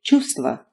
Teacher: you can thankfully skip the first V sound and say чувство instead of чувство.